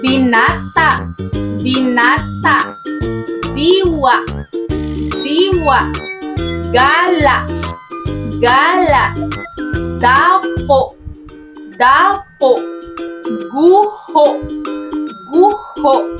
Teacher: ito ay nagpapahayag ng dahan-dahan at ang diin ay a nasa ikalawang pantig buhat sa hulihan ngunit ang huling pantig na mayroon sa malumi ay binibig natin